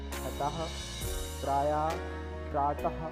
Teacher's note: इसका उच्चारण आधे हा के जैसा होता है। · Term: विसर्ग